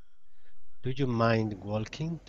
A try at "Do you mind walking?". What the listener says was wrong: I'm hearing a zhu instead of a you. Do you? So, do you mind walking? It's almost like dwalking. Dwalking. Do you mind dwalking?